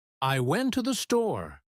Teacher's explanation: The words to and the become so weak that they almost disappear. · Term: unstressed words